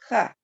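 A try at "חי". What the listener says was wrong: The yud at the end of the word. So it says, chai. Chai.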